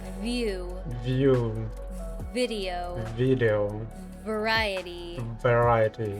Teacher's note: remember that v is voiced, which means your vocal cords vibrate.